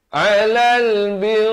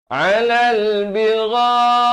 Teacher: Di sini jadi mad muttasil di sini dibacakan dengan 4 atau 5 harakat.